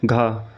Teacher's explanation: यह क वर्ग क ख ग ङ का चौथा वर्ण है जिसका उच्चारण कंठ से होता है।